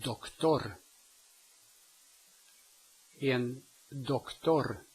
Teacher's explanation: it's a short open Pronunciation o